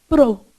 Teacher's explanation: esse O aqui, ele é um arredondado. Então, você fecha a boca, vibra a língua e produz um O arredondado. Você faz assim, ó, pro.